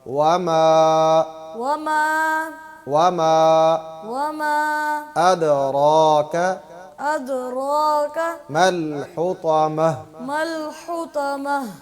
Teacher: لمبا کرتے وقت آواز کو ناک میں نہیں لے جانا, آواز کو سیدھا سیدھا نکالنا ہے.